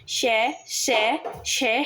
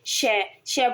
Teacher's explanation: यह ऐसे व्यंजन है इनका नाम ऊष्म व्यंजन है जैसे आप बोलते हो तो आपके मुंह से एक गर्म हवा निकलती है